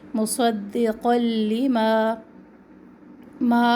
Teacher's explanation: مصدقا لما ما الف مدہ ما کی آواز جو ہے ناک میں نہ جائے